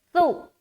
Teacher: سا کو نرمی کے ساتھ بغیر سیٹی کے ادا کریں گے